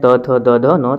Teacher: जब इसको हम बोलते हैं त थ द ध न, तो ये दांत ये जीभ हमारा दांत में सटता है, तब जाके त थ द ध न हम बोल पाते हैं।